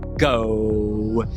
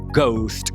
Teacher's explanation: Nome técnico dele é consoante oclusiva velar vozeada.